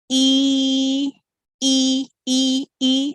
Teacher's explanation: E is also a pure vowel. It's not a diphthong because the shape of mouth doesn't change.